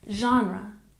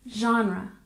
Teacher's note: number nine genre we stress the first syllable